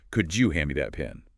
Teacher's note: The D and Y sounds blend into a J sound.